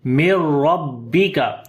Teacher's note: After the noon sakin, the next letter is ra. We make idgham without ghunna. So this noon we do not read. Mim we connect directly with the ra.